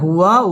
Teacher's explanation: ওয়াও ঠোঁট গোল করে উচ্চারণ করতে হবে।